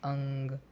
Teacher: अनुस्वार का जो उच्चारण होता है वो नासिका से होता है जब भी हम अनुस्वार का उच्चारण करते हैं तो हमारे नासिका से हवा निकलती है · के लिए हमें नासिका की मदद लेनी पड़ती है यानी कि अनुस्वार का जो उच्चारण होता है वो नासिका से होता है